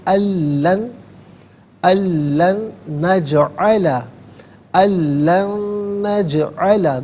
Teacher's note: نون ساکن ہے، اسے نجعل کی نون کے ساتھ ملائیں گے